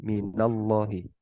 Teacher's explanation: ketika ada ismul jalalah dan huruf sebelumnya fathah maka dibaca tebal